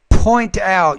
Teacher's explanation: you need to pronounce that P with more air